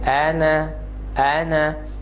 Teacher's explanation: when you recite in conjunction, you will skip the alif madda